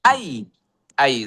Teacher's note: এটা জবরের বাম পাশে জজমলা ইয়া, তাহলে এটা লিনের হরফ, লিন। তার মানে এটা তাড়াতাড়ি পড়তে হবে।